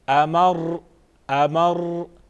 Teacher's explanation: امارا، وقف امر، امر، لیکن وقف کی حالت میں آپ نے احتیاط کرنی ہے کہ آخری حرف کو نہیں ہلائیں گے، اس طرح آپ نے نہیں پڑھنا، غلط یہ ہے۔ امر، امر، یعنی را میں وائبریشن پیدا نہیں کریں گے، اس کو نہیں ہلائیں گے